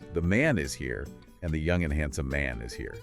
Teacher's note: In both cases, the word man carries the stress. It's the boom.